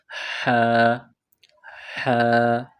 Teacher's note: اس کو حلق یعنی گلے سے نکالیں گے زور لگا کر